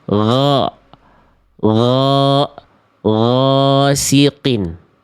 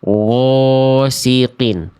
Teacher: Yang B salah karena ginnya dibaca monyong dibaca muncung.